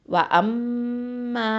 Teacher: இப்போது வாவ் ஃபத்ஹாவா, ஹம்சா ஃபத்ஹா, மீம் ஷத்தா, மீம் ஃபத்ஹா, அலிஃப் மத்து, மா. وَأَمَّا இந்த இடத்துல மீம் ஷத்தா இருக்குது. ஓகே, அப்போ என்ன பண்ணணும், அக்பல் குன்னா கொடுக்கணும்.